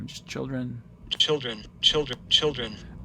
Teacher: I transcribed that with a velarized L.